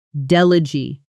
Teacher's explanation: But as a noun, meaning a representative sent to a meeting or conference, the stress moves to the front and that final vowel softens into an it sound